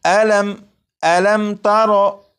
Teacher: جب میم ساکن کے بعد تا ہے تو اس میم ساکن میں غنہ نہیں کریں گے